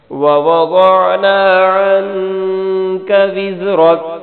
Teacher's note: ووضعنا عن، یہاں پہ غنہ کرنا ہے. وزرک، زا کو سختی سے پڑھنا ہے، را کو موٹا پڑھنا ہے